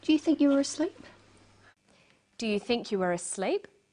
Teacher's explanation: Her voice goes up at the end of the sentence. We call this a rising tone.